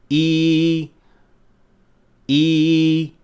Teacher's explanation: اب جہاں تک یا کا تعلق ہے، منہ کا کھلنا ذرا تنگ ہوتا ہے، لیکن یہاں جو بات اہم ہے وہ زبان کی پوزیشن ہے۔ زبان کا درمیانی حصہ اوپر سخت تالو تک اٹھتا ہے لیکن اسے چھوئے بغیر۔ عربی میں ہم ای کی آواز اسی طرح پیدا کرتے ہیں، ای اور عملی طور پر یہ اس طرح سنائی دیتی ہے۔